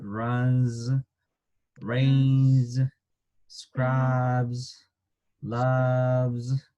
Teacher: Es una pequeña Z sin exagerarla como hacerla como una abeja, pero es muy, muy ligera.